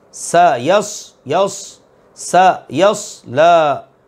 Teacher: سیٹی کی مثل آواز پیدا کریں گے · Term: سین اور صاد